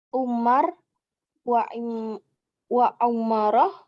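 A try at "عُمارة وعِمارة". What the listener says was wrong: Dhammah dan kasrahnya berbeda ya.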